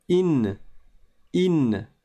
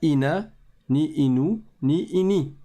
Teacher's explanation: On ne dit pas ina, ni inu, ni ini. Mais on s'arrête sur la consonne du n, du noun.